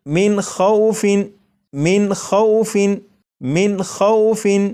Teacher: نون ساکن کے بعد خواہ ہے اور خواہ حروف حلقی میں سے ہے، اس لیے یہاں پر اس نون ساکن کو ظاہر کر کے پڑھیں گے